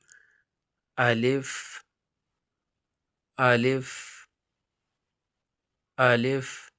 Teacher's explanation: الف جو ہے وہ منہ کے اندر کا خلا سے، یعنی نہ دانت کہیں پہ لگتے ہیں نہ ہونٹ آپس میں لگتے ہیں